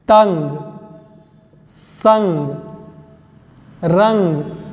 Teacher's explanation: अनुस्वार जिनका उच्चारण नाक और मुख दोनों से किया जाए